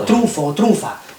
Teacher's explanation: Porque ahí, ante F, es también pues un archifonema nasal. Y bueno, pues fonéticamente es una nasal labiodental